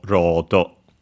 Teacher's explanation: the usual or that becomes simply a long vowel, just like in received pronunciation in British English